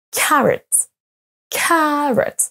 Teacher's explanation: on accentue sur la première